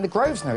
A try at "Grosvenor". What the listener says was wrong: You don't pronounce the S. No. It's a silent S.